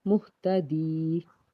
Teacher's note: या साकिन से पीछे ज़ेर है, इसलिए एक अलिफ के बराबर खींच के पढ़ेंगे